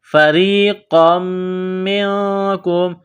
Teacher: نقطوں والا قاف ہے، بڑا قاف، اس کو موٹا کرنا ہے، قاف کو میم کے ساتھ ملانا ہے۔ · میم مشدد ہے تو غنہ کریں گے، آواز ناک میں چھپائیں گے۔